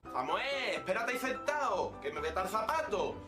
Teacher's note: cecean en las zonas de color rojo, pronunciando todos los sonidos, independientemente de que sean S o Z en el castellano estándar, como Zetas. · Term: ceceo